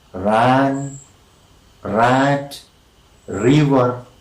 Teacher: the passive articulator are brought into contact with each other and the sound is produced by a series of tapping on the roof of the mouth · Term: trill